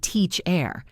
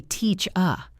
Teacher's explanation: It ends with ER. But we do not say teach-er. We say teach-a. The end is a schwa.